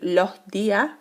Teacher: aspiración de la S al final de sílaba, por ejemplo, decir los días, que es lo que hacemos nosotros, alargamos un poquito la vocal para indicar que hay sobra o falta una consonante.